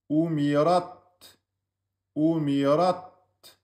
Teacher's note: Ta soukoun, c'est pas qalqala. C'est on bloque et on lâche l'air.